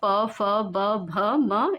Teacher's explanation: उच्चारण ओष्ठ से प वर्ग में आ जाएगा